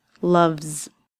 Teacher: The V sound at the end of the word means that it will be a voiced sound and it will end with a Z.